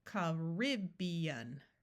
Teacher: in some places people say Caribbean where the rib is accented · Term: schwa